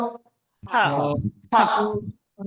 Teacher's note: ہا کے اوپر زبر آیا تو ہا، کھینچنا بالکل بھی نہیں ہے